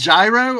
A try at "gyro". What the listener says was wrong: Euro. Yeah, you don't really pronounce the G that way.